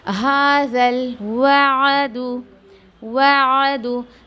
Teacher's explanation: आइन के आवाज़ को ठहरा के निकाल रही हूँ आराम से हलक में, ना कि मैं उसको मद दे रही हूँ · मैं वाव को खींच नहीं रही हूँ, मैं वाव को आइन में मर्ज कर रही हूँ, मैं वादू नहीं पढ़ रही, वादू नीट सुनो तो वादू।